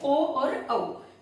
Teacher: ठीक है, तो अ और उ को मिला करके ओ औ है। अ का उच्चारण स्थान क्या है? कंठ। उ का उच्चारण स्थान क्या है? ओष्ठ। इसलिए कंठोष्ठ।